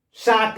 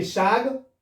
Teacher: शाक है, शाक यानी कि साग, उसको कर दिए हम लोग उच्चारण में सुविधा के लिए विकृत कर दिए, तो तालव्य स को दंत्य स में कर बदल दिए।